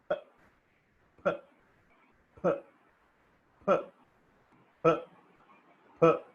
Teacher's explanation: But the moment I thought inside I should pronounce p, the moment I said p, both the lips got closed. So the air got closed and suddenly released. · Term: bilabial plosives